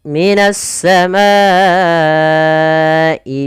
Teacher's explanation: kita memanjangkan untuk hukum tajwid mad wajib muttasil sepanjang empat harakat atau lima harakat